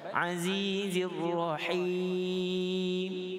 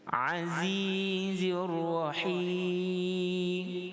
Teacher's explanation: Ra dibaca dengan tebal